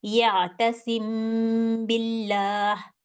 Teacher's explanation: थोड़ी देर के लिए दो सेकंड के लिए मैंने इसको रोका और अपने होठों में इस मीम को छुपाया छुपा के फिर मैंने बिल्ला पढ़ा यातसिम बिल्ला इसी तरीके से अब इसमें गुना भी किया और इसमें मीम को छुपा भी लिया इसकी कुछ एग्जांपल्स के साथ आगे इसको देखते हैं कि ये इसको किस तरह पढ़ेंगे।